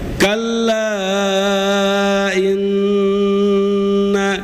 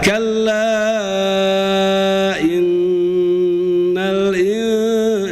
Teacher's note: kalla apa itu tegas yang pertama. Kemudian kita bertemu dengan nun itu harus lembut